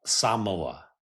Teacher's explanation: They pronounce it Samoa. More of like an emphasis on the first syllable.